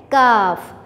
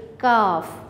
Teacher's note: ये हमारी ज़बान की जो जड़ है वो हमारे तालू से टकराती है